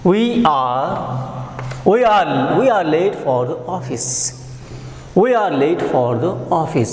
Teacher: It is an ordinary statement. So it will take a falling tone.